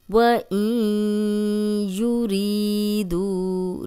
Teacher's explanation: نون کی آواز ناک میں جائے گی اور یا کی پیش کو ہم لمبا نہیں کریں گے۔ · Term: غنہ